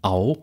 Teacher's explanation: es sind zwar Segmente die einen Verlauf haben man kann sie teilen in z.B ein A und ein o da bekommen wir dann au sie sind aber letztlich ein Segment